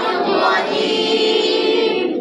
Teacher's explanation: তে জিব্বার মধ্যখান তারপর উপর বরাবর উপরে যে আছে জিব্বার মধ্যখানের উপরে বরাবর তালুর সঙ্গে শুধু লাগবে, কিন্তু কোনো হামস বের হবে না। শ্বাস প্রশ্বাস জি আছে শিনের ক্ষেত্রে হামস ক্রিয়া হচ্ছে, বাতাস বের হচ্ছে, কিন্তু জিমের ক্ষেত্রে ওই বাতাসটা হবে না, যেটা সাক্তার মতো হয়ে যায় বা হামসের মতো হয়ে যায়।